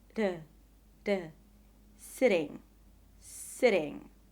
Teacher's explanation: The soft or flap T appears between two vowels in an unstressed syllable. It is spelled with a T or a double T, but is pronounced as a short, very soft D.